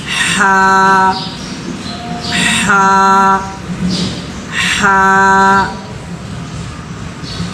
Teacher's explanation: حلق کے خالی حصے سے ہا نکلتا ہے